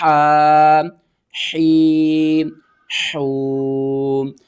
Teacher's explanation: حا کو باریک کر کے پڑھنا ہے، اور اوپر کی طرف کھینچنا ہے